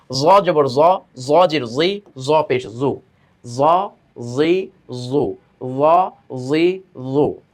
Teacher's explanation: জিহ্বার আগাটা দাঁতের আগার সঙ্গে গিয়ে লাগবে, তাই না, উপরে দাঁতের আগার সঙ্গে।